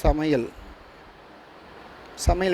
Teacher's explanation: ஐ அப்படின்றது சொல்லின் முதலில் வந்தா ஒன்றரை மாத்திரை சொல்லுக்கு இடையில் வந்தாலும் இறுதியில் வந்தாலும் ஒரு மாத்திரைதான். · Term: ஐகாரம்